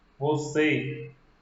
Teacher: a palavra você, a sílaba tônica é a última. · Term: oxítona